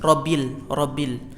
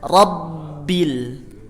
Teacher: Namanya asyiddah, menekan pada makhraj ketika bertasydid.